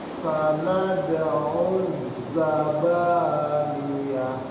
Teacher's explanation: Jadi ya-nya tuh harus jelas dia, enggak ke hidung.